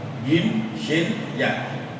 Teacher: jim itu di tengah lidah, sama dengan ya dan shin. Jim, shin, ya itu di tengah lidah.